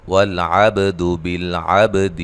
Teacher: عب با پہ قلقلہ کرنا ہے، اس کو ہلانا ہے، ٹھیک ہے، لام کو ہلانا نہیں، لام حروف قلقلہ میں سے نہیں ہے۔